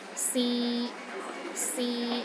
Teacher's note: The third tone is a mid-tone. It's pronounced in the middle of your range and it is steady.